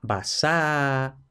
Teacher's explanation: la doble s no es que se pronuncie doble s sino que marca que es s sorda